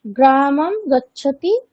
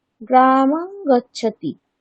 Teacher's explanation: এখানে অনুস্বারের পরে ক বর্গের বর্ণ রয়েছে, তাই অনুস্বারটি ক বর্গের পঞ্চম বর্ণ ঙকারের মতো উচ্চারিত হবে। তাহলে উচ্চারণটি হবে গ্রামং গচ্ছতি আচ্ছা, এরকম।